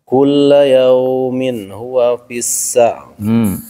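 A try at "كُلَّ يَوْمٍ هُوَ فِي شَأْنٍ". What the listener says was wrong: Fi-nya mad. Kulla yaumin huwa fi sya'n. Sya'n.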